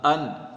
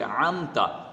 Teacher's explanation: یہ حلق کے نیچے سے حمزہ ان اور یہ حلق کے درمیان سے عمتا